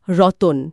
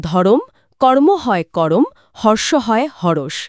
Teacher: এখানে মূলত যুক্ত ব্যঞ্জনগুলোর মাঝখানে একটা স্বরধ্বনি এসে মানে সেগুলোকে ভেঙে দেয় আর কি। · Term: স্বরভক্তি